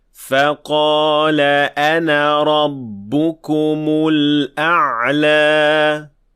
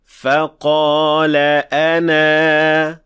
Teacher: But if we do stop, then we would say فَقَالَ أَنَا. Notice how we extended the alif at the end for 2 counts.